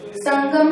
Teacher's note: अनु में नाक से ज्यादा हवा निकलती है और मुह से कम निकलता है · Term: अनुस्वार